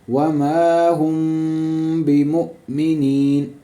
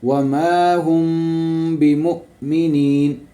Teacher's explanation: ناک میں آواز گئی تھی، ٹھیک ہے، اور ہمارا منہ بند تھا تو آواز ناک میں گنگنائی، مطلب ناک میں ایک بار کے لیے آواز چھپ گئی تھی، ٹھیک ہے۔ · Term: اخفاء شفوی